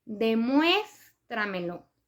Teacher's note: lleva acento en la E, en la segunda E, que es la cuarta sílaba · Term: sílaba tónica